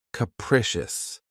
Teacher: This word has 3 syllables, and the stress is on the second syllable. Keep in mind that the first syllable has that schwa sound.